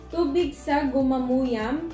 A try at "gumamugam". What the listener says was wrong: Mali, gam yun. G yun. G nga eh.